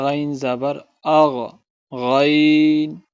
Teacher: غین کی آواز جو ہے وہ نیچے حلق سے ادا کرنی چاہیے آپ کو